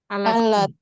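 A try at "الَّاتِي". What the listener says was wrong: Allati Ini allati panjang. Allati. Ini la-nya panjang. Allati.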